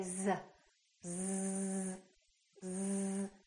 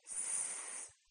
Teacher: a vibration this time no therefore s is a voiceless consonant so Z is voiced s is voiceless here we have a vibration here we don't have a vibration